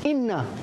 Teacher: Nun dibaca dengung 2 harakat, iaitu hukumnya adalah wajibul Gunnah. Inna, jangan baca inna ya.